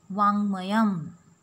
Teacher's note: when K is followed by anunasik varnaha, it should be replaced with NG.